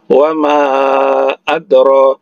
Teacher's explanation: ro-nya dua harakat karena mad asli atau mad tabi'i alif. Ma dua harakat karena mad tabi'i alif ya.